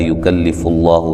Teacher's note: لا الف مدہ ہے، یکلف اللہ، لفظ اللہ کو موٹا ادا کریں گے